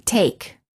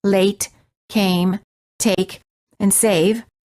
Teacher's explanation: The lips are not rounded and they are relaxed and the tongue is tense moving from mid- high position to high position. The common spelling patterns for this sound are a plus consonant plus e as in late, came, take, and save. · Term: A as in take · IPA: /eɪ/